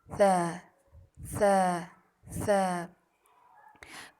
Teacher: زبان کی نوک کو اوپر والے 2 دانتوں کے اندرونی کناروں سے نرمی سے لگا کر پڑھنا. زیادہ زبان دھیان رکھیں باہر کی طرف نہ نکلے.